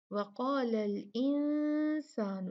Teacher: یہ جو نون ساکن ہے جب بھی اس کے بعد سین آتا ہے تو ہم نون کو چھپا کر پڑھتے ہیں